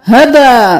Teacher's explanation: अब सूरतुल वाक़िआ की आयत नंबर 6 में देख लीजिए, हबाअम बस्साम, हा ज़बर हा, बा ज़बर अलिफ मद बा, हबा, 5 अलिफ के बराबर खींचना है।